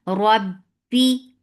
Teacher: And attached with ba. Ba will get sifa of shidda. The sound would cut off abruptly. · Ra is heavy. Whenever ra is with fatha, it is heavy. And attached with ba.